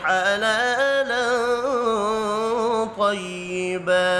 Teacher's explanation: تنوین کے بعد طا ہے، اخفاء حقیقی ہوگا، ملانے کی صورت میں غنہ ہوگا